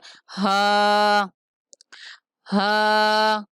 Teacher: ہا اقصائے حلق سے جو سینے کی طرف حلق کا حصہ ہے وہاں سے ادا ہوتا ہے